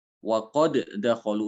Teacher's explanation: Waqad dakholu itu dalnya akan diidghamkan ke dal berikutnya.